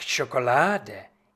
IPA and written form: ʃoːkoˈlaːdə (Schokolade)